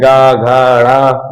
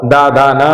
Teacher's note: तो वो जो है उसका एंडिंग ही घोष होता है ना। के उच्चारण में कंठ में, है ना, कंपन होता है, वो घोष व्यंजन होते हैं